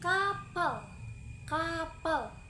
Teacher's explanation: belakang lidah ditempelkan ke langit-langit lunak pita suara tidak bergetar